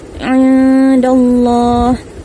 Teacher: huruf ain makhrajnya di tengah kerongkong